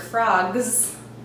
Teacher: in the word frogs, that S is going to sound like a Z. And the reason for that is that the G, the last sound before the S, is voiced.